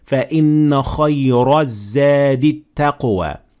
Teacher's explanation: I applied the normal rule that the ra has fatha on top of it, so that means that it is full mouth. So I should say فَإِنَّ خَيْرَ الزَّادِ التَّقْوَى with a full mouth because I kept on reading.